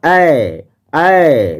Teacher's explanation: ऐ कहते हैं तो अ है अ और ए तो एक हो गया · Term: संयुक्त स्वर ध्वनि